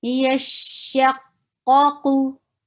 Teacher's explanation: Ya is light. Sheen is light. But these qaf both are heavy.